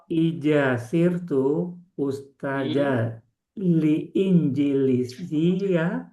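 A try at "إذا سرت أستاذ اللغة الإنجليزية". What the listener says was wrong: Harusnya seperti ini. Ida sirtu ustadzal injiliziyah. Nggak perlu pakai li. Ustadzal injiliziyah. Itu bacanya ustadzal injiliziyah.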